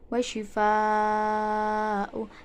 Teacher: terdapat mad wajib mutasil sebab mad tabi'i bertemu dengan hamzah dalam satu kalimat